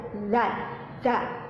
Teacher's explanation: cara pengucapannya, pelafalannya itu ada pada ujung lidah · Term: huruf zal